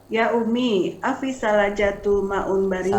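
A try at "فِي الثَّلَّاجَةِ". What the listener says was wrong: Salajati. Afis salajati. Ada fi-nya Ibu.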